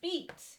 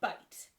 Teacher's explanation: long i in the middle english period was pronounced like long e as in beat and only in the modern english period does it take on this i sound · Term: great vowel shift